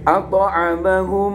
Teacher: Ketika menjadi seperti satu seperti itu, maka kayak mimnya ada tasdidnya, sehingga kalau mim bertasdid dibaca gunnah, kayak nun sukun apa nun, kayak idgham biguna, langsung melebur. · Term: idgham mimmi